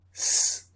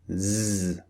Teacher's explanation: so unvoiced is s the first sound voiced is z the second sound so Su Zo this is the big difference between the two